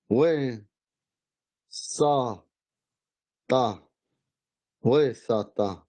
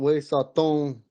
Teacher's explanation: You can't say way, it's way because it stops. It's got that glottal stop after the acute.